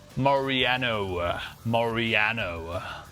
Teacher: all the O's are extra long